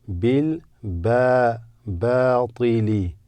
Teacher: This is a long alif, makes the ba longer.